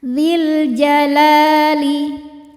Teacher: Alif lam nya namanya alif lam qamariyah karena alif lam menghadapi huruf qamariyah yaitu jim, maka lam dibaca jelas.